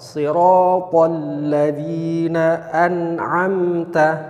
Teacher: Maka huruf nun sama sifatnya juga dengan huruf lam sukun tadi. Ketika nun sukun, dia mempunyai sifat rokhwah ya, makhrajnya mengalir di tempatnya. Jadi jangan langsung dilepas atau diputus, biarkan saja dia mengalir, suaranya mengalir sehingga tidak sampai terjadi tawalud.